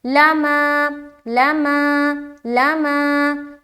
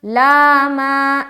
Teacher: آگے لما, لام زبر لا, میم الف زبر ما, لام کو جلد پڑھیں گے زبر کی حرکت کے ساتھ اور میم کو الف کے ساتھ ملاتے ہوئے الف مدہ کریں گے, ایک الف کی مقدار کے باقدر کھینچیں گے